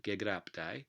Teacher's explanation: you get assimilation of that underlyingly aspirated stop to the following unaspirated one